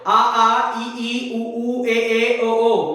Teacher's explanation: नाक पकड़ के बोलकर देखो, कोई फर्क नहीं पड़ेगा क्योंकि केवल मुंह से निकलते हैं।